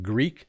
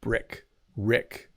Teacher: one is a very long sounding E, Greek, and one is a very short I.